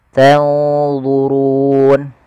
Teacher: ada nun mati ketemu d ikhfanya langsung ke d agak tebal